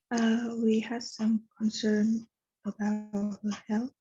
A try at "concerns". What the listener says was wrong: Good. Yes, I didn't hear the S the first time.